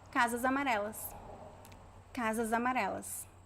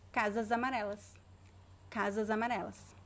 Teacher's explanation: the s connects with the vowel